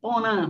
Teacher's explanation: Muitas vezes a gente quase tem a impressão de estar ouvindo, quase certeza de estar ouvindo um N, porã, porque é realmente o TEP nasal.